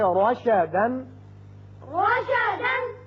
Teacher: جب بھی را کے اوپر زبر آ جائے تو اس کو ہم پر پڑھیں گے، منہ بھر کے پڑھیں گے.